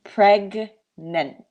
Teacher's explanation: in english GN the two sounds are separate